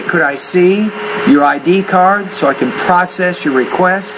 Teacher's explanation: Actually, the word can here should not be focused.